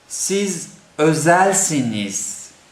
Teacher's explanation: on the end we have actually the z sound, but in Turkish it is like between the z and s